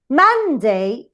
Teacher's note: inside the word Monday, man is the syllable that is stronger